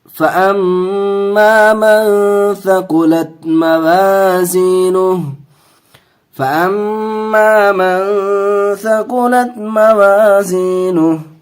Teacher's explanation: میم پہ تشدید ہے، گنہ کر کے پڑھیں گے